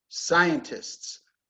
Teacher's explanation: scientists stress on the first syllable